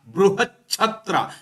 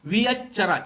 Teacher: ಪೂರ್ವ ಪದ ಅಂತ್ಯದಲ್ಲಿ ಬರುವ ತಕಾರಕ್ಕೆ ಆದೇಶವಾಗಿ ಅಲ್ಪಪ್ರಾಣ ಚ ಬಂದಿದೆ